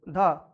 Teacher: ये दंत से स्टार्ट होता है मतलब दंत से बोला जाता है है कि ना उसके बाद क्या ये महाप्राण भी है ये सब इसका मीनिंग निकल रहा है कि ये ज्यादा इसमें हवा निकलेगा मुंह से प्राणवायु का ज्यादा उपयोग होगा।